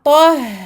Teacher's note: Ici, on amincit le ha. Attention à ne pas faire un gros ha parce que le ta juste avant est emphatique.